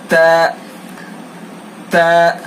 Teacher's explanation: یہ سامنے کے چوڑے سے 4 دانت جو ہوتے ہیں ان کو ثناء کہتے ہیں، اور اوپر کے 2 والوں کو ثناء علیا کہتے ہیں، نیچے والے 2 کو ثناء سفلی کہتے ہیں. تو تا کو ہم ادا کرتے وقت زبان کی نوک کو ثناء علیا کی جڑ پر لگائیں گے، ادا کریں گے.